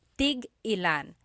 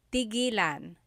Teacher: when there's a hyphen in it, you have to have that glottal stop